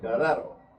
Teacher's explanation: see a profile on there And that's actually Spanish for blacksmith You drop the H and you roll the R